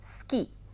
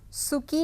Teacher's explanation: सुकी नहीं कहा जाता है, बहुत ज़्यादा, बहुत हल्का सा ऊ का उच्चारण किया जाता है